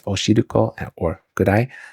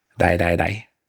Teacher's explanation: my tongue is not as far back in my mouth as it would be for an English R sound but it's also not as far forward as it would be for an l sound